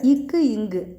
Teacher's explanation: அது எப்படி தோன்றுது அப்படின்னா நாவின் முதற பகுதி அன்னத்தை தொடும்